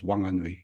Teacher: if you're from there, you say it as wanganui, you drop the H. But for most iwi, the NG is ng.